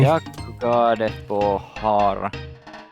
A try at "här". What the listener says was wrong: You keep pronouncing it har instead of här.